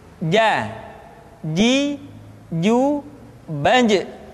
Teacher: dia tidak boleh mengalir nafas karena sifatnya aljahr